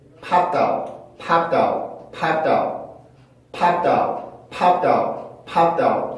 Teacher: D 발음이라서 원래는 그냥 그 자체만 연음을 시켰을 때는 다웃이 되어야 되는데 그 앞에 있는 무성자음의 영향을 받아서 이게 트처럼 변하게 됐어요. 그러니까 이때 소리가 다웃이 되는 게 아니라 다웃처럼 바뀌게 돼요.